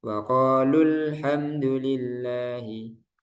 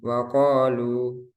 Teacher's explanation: Kalau di waqaf dia panjang. Waqalu. Nah, panjang.